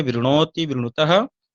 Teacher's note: अब यहां पर हम देख रहे हैं कि री के तुरंत बाद न है, री के तुरंत बाद जैसे ही न आया, न परिवर्तित हो गया ण में। पुनः हम वर्ण सम्मेलन कर देंगे, वृणोति, ऐसा होगा। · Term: णकार